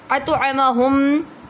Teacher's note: میم ساکن کے بعد دوسری میم آ رہی ہے تو ادغام شفوی ہو رہا ہے، اس پر بھی غنہ کریں گے۔